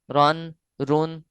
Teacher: را پر دو زبر یا دو پیش ہوں، رن، رن، یہ بھی موٹے پڑھے جائیں گے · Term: موٹا